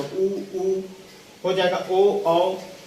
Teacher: तो हम देखते हैं पहले, जैसे उ बोलेंगे तो हमारा जो ओठ है उसका आप बोल के देखिएगा, उ बोलने पर ओठ क्या हो जाएगा, वृत्ताकार आकार ले लेता है। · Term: वृत्तमुखी